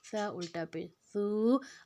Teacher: نرم حروف ہے، اس کو ہم زبان کی نوک کو دونوں دانتوں کے کنارے میں زبان کی نوک کو رکھیں گے تو یہ ادا ہو جائے گا۔